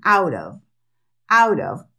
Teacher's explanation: cuando la t queda dentro de dos vocales ellos la pronuncian como una d y nosotros escuchamos una r · la palabra of que se pronuncia con la v no con la f